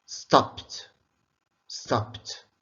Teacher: the ed is pronounced as t. Why? Because it comes after a voiceless sound. P is a voiceless sound.